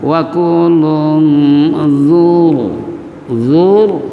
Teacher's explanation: ro tabkhim karena sebelum ro ada doma, karena ro terbagi dua, ada tabkhim ada tarkik.